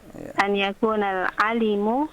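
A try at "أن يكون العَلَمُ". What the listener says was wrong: Alamu, alam. Alamu, bukan ali. Fathah ya, lamnya fathah. An yakunal alamu.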